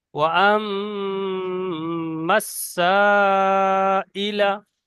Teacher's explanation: সা একটু টান বেশি হবে। আর মিম, ও আম্মা বলে মিম তাসদিদ গুন্না ওয়াজিব, গুন্না করতে হবে।